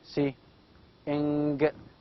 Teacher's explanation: The back of the tongue is with contact with the velium. It is lowered down here, and you can see also here larynx. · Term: nasal sound